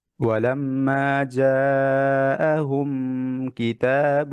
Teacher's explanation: মিমে সুকুন আছে গুন্না নাই, মানে এটা ক্লিয়ার হবে